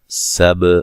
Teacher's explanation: سین کو باریک سیٹی سے ادا کریں گے، با پہ قلقلہ کرنا ہے، با کو ہلا کے پڑھنا ہے